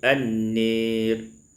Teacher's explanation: Pada ayat yang ke-103 an-nari, imalatu fathatin nun wal alif, dibaca imalah fathah nun dan alif